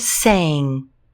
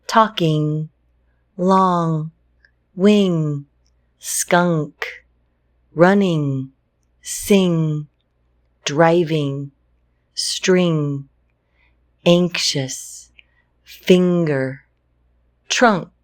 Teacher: When you say this sound, it actually, the sound comes through your nose. The back of your tongue is up, and you'll feel a vibration, a little, it like tickles your nose when you say it.